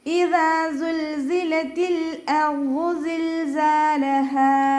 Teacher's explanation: ഹംസ നല്ലോണം ക്ലിയർ ആക്കിയിട്ട് ഉച്ചരിക്കുക കേട്ടോ. അഖ്സൽ ഹൽക്കാണ് ഹംസയുടെ മഖ്റജ്, തൊണ്ടയുടെ ഏറ്റവും അവസാന ഭാഗം. അതിൻ്റെ സൗണ്ട് ക്ലിയർ ആക്കി കൊടുക്കുക.